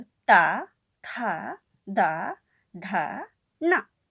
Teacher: इनका उच्चारण करते समय बच्चों हमारी जीभ दांतों को टच करती है, दांतों को छूती है, जिसके कारण इन वर्णों को दंत्य वर्ण कहा जाता है।